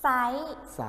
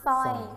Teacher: ไม่ได้ใส่รอเรือในการออกเสียงเลยแม้แต่ตัวเดียวนะครับ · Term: คำควบกล้ำไม่แท้